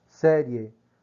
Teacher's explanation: Você vê que há uma passagem entre a semivogal rápida para terminar na vogal E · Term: ditongo crescente